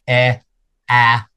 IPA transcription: ɛ ɑ